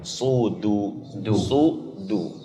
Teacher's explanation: Jadi di situ pelan-pelan agar tepat. Jangan sampai huruf dalnya terbekas dari huruf sad sehingga dalnya tergelincir jadi dha.